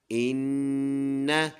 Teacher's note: ان غنہ کریں گے یعنی ناک میں آواز لے کے جائیں گے ایک الف کے برابر